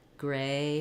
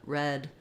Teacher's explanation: the a Glides and the E does not